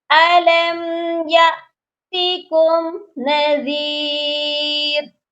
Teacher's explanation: یأتیکم کی جو میم ہے اس پر بھی غنہ نہیں ہوگا